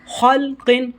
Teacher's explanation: خلقن موٹا کر کے پڑھا جائے گا، خا اور قاف کو حروف مستعلیہ میں سے ہیں اس لیے۔ اسی طرح یہاں بھی اخفا کا قاعدہ لگے گا، جیم زبر جا، دال یا زیر دی، جدی، دال دو زیر دن، جدیدن، خلق جدید۔